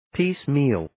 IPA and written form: 'piːs,miːl (Piecemeal)